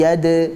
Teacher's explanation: huruf dal sukun. Dibaca sebagai qalqalah sughra, bukan yadkhuluna, tapi yad.